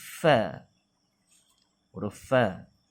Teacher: Gigi kacip bibir bawah terkena dengan gigi kacip atas. Bibir bawah terkena gigi kacip atas.